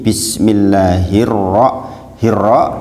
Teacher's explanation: Jadi Alif lamnya nggak dibaca langsung dimasukkan ke rok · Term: alif lam Syamsiah